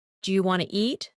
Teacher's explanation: Sometimes letters are dropped, like the T in want to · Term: connected speech